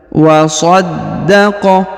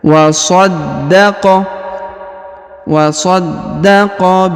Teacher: wasal ya Hamzah penyambung antara kedua kata kemudian kita lanjut wasaddaqo huruf Dal berharakat tasdid perhatikan maka kita tahan dan kita tekan